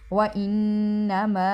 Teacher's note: نون مشدد ہے اور میم پہ مد ہے تو لمبا کریں گے